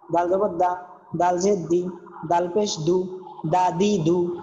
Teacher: জিবার আগা দিয়ে উচ্চারণ হবে একবারে নরম।